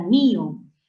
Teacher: en mío el acento no recae en la o la abierta sino en la cerrada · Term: yato acentual, hiato acentual